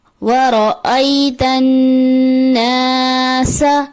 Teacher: نون پہ غنہ ہے، غنے کی مقدار کو مکمل نہیں کیا جاتا جو کہ درست نہیں ، درست ادائیگی ہے وَرَأَيْتَ النَّاسَ، سین کی جگہ سا کی